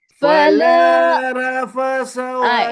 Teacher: Ra tebal. Fa nipis. Sa jelirkan lidah.